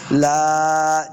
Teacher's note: یہ جائے مدہ ہے، اس کو دو حرکات لمبا کریں گے ، لا، جب وقف کریں گے تو اس کو ایک زبر